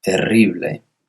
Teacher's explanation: We hear that rolling R, so R's in English are very different to in Spanish.